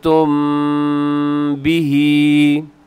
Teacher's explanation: मीम साकिन की आवाज़ को भी आप नाक में रखें क्योंकि मीम साकिन के बाद बा आ रहा है तो यहाँ पर इख्फाए शफवी हो रहा है।